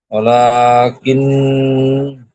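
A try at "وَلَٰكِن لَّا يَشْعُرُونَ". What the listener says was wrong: কিন হবে না, লামের উপর তাজদিদ আছে, সেই জন্য লামের সঙ্গে মিলিয়ে পড়তে হবে। ওয়ালা কিল্লা,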